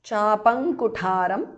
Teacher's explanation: because of sandhi anuswara changes to ng